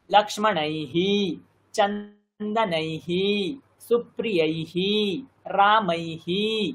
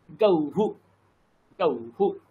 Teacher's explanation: ওই কারের পরে বিসর্গ থাকলে হিকার হয়ে যায়, আর ও কারের পরে বিসর্গ থাকলে হুকার হয়ে যায়। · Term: বিসর্গের উচ্চারণ